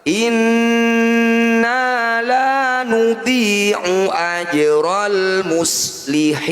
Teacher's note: Jadi qalqalah artinya memantul, sughra artinya kecil. Jadi jim ini kita pantulkan tapi jangan berlebihan. Ajra tidak boleh, ajra itu berlebihan. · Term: qalqalah sughra